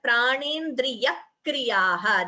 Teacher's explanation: there is a second k being heard before kriyaha. That is called dvitvam.